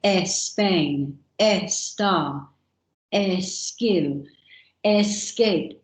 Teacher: here in spain the children put an artificial e sound in front of an s · the children put an artificial e sound in front of an S. So they say Spain, estar, skill, escape, and that comes through into their writing because they hear the teacher say it.